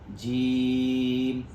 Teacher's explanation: दरमियान जुबान दरमियान तालु यानी जुबान का बीच वाला हिस्सा और दरमियान तालु